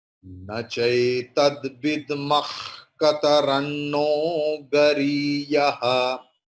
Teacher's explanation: Nachai tad vidmah. Here ka, after visarga there is ka. So the visarga's pronunciation will be jihva mulya, like kha.